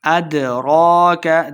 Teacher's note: دال حروف قلقلہ سے خوب واضح کریں گے